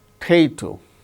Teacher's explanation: The second syllable gains stress.